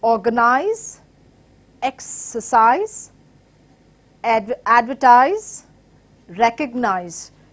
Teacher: that is words ending with ISE, takes the stress of antepenultimate, which is last from the third